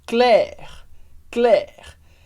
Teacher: o r em francês é sempre o r da garganta